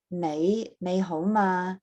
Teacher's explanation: the standard that people tend to learn when they say, how are you, is nei hou ma, the low rising nei, and then hou, and then ma